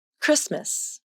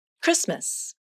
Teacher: there is no T sound in the word Christmas, although the letter T is in the spelling. And let's look at another word, shifts, as in, I'm scheduled for back-to-back shifts at work today. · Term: Rule of Three